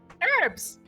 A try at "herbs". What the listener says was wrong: She pronounces the H.